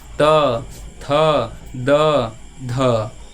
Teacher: ये त थ दवा स करेगा देखिए आप बोल के देखिए त थ द ध ऐसे बोलिएगा त से तो त थ किससे हो जाएगा दंत से यानी दांत से